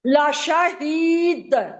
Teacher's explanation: لشہید کھینچنا تو ہے ہی، لیکن دال پہ تھوڑا زور بھی دینا ہے. یہ حروف قلقلہ میں سے ہے